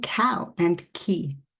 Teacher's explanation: This sound is made when you lift the back of your tongue up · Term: K sound